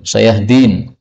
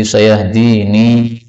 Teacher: boleh ditambah ya di akhirnya menjadi sayahdini, panjang